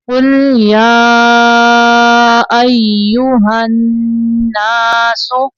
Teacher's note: نون مشدد پہ غنہ ہوگا